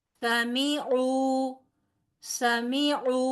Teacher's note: 3 بھی ایک حرکت، میم بھی ایک حرکت اور او 2 حرکت کیونکہ واو مدہ ہے